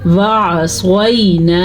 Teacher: واو زبر وا، عین زبر ع، وع، صاد زبر یا، صوی، وعصی، نون زبر الف نا، وعصینا. ٹھیک ہے، عین کو واضح کریں گے، صاد کو پر پڑھیں گے